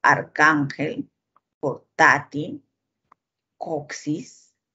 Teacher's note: llevan la mayor fuerza de voz en la penúltima sílaba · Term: graves